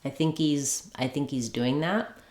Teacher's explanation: Sometimes the H will drop and it'll just sound like ease.